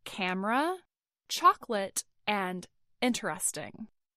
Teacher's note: speakers may drop the syllables depending on who's speaking, the regional variety of American English, or even the context, whether it's, you know, formal or informal.